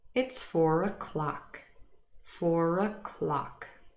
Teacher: And the r has appeared, the linking r.